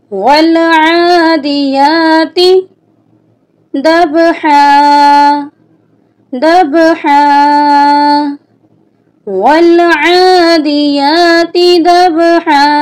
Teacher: والعادیات، یہاں پہ یا اور عین کے اوپر کھڑی زبر ہے۔ کھڑی زبر کو ہم 1 الف کی مقدار کے برابر لمبا کر کے پڑھیں گے